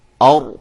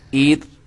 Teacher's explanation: جب میں نے اور کہا تو را کو موٹا کیا, عید کہا تو را کو باریک کیا